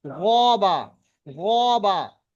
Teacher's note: গবা, আওয়াজটা মোটা, মুখটা গোল। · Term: পুর